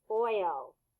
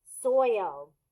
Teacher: a dip thong is because your mouth moves two different ways first it's a circle and then it goes back into a smile